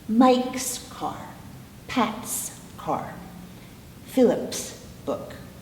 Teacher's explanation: possession in which the sound s would be all air once again so we would say Mike's car Pat's car Phillips book okay